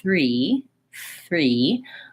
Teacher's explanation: the front of my tongue does have to be in that th position but the back of my tongue is already starting to be tight and I just pull the front back to finish the R sound so you can try it this way se3 without the th